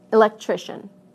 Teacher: listen to how the stress moves right to the syllable immediately before the suffix